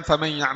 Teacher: Jadi harus keluar suara dari hidung. Jadi saat kita mengucapkan famal ada dua suara selama ghunah ini ada dua makhraj.